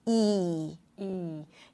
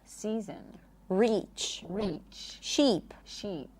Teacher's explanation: for the E sound, the tongue goes up. Right? The body of the tongue almost touches the upper palate.